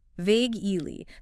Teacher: 2 syllables. Stress on the first.